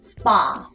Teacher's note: spa라고 발음할 때는요, 입모양의 변화가 전혀 없어요. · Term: 단모음